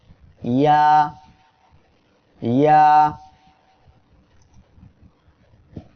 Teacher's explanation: ইয়া অক্ষরটি জিহ্বার মধ্যখান তার বরাবর উপরে তালুর সঙ্গে লাগিয়ে উচ্চারিত হয়। সবাই জিহ্বার মধ্যখান তার বরাবর এই উপরে তালুর সঙ্গে লাগান, তারপরে উচ্চারণ করেন আমার সাথে, ইয়া ইয়া।